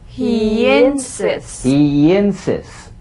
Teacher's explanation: Linking words that end in the Y buzz. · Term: The Y link